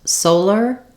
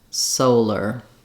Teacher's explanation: solar, having to do with the sun, has the first syllable stress, and letter O says the O diphthong, just like in soul.